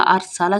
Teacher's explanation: زبر را، ار، سین زبر سا، ارسا، لام زبر لا، ارسالہ، سین میں سیٹی کی آواز ادا ہوگی